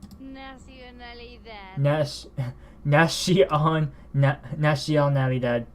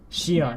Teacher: It's not Shion because it's not an SH. It's not shh, but s. It's a single S, not SH.